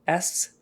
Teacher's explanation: s is just air no voicing or vibration